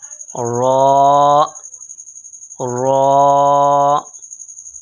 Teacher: زبان کے کنارے کی پشت جب اوپر والے 3 دانتوں کے مصوروں سے لگے تو اس سے را ادا ہوتا ہے۔ اب تصویر میں دیکھ رہے ہیں کہ تیر کا نشان دیا ہوا ہے، تو جب زبان کے کنارے کا پیچھے والا حصہ اوپر والے دانتوں کے 3 مستوروں سے لگتا ہے تو را ادا ہوتا ہے۔